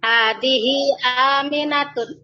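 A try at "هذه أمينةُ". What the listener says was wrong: Aminatun atau Aminatu? Aminatu bertanwin tidak? Kenapa tidak bertanwin? Kenapa tidak bertanwin? Tahu sebabnya?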